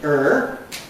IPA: ɝː